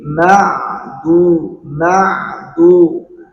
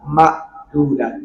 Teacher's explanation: penempatan huruf ain itu adanya di wastul halq ya tengah-tengah tenggorokan. Jadi ma'du ma'du jangan sampai hilang mau ma.